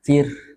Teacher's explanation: kalau ro yang sukun atau ro yang tarkik tipis, dibaca tipis, itu seperti menghembuskan napas atau mengalirkan udara di penghujungnya, ya, seperti bertiup.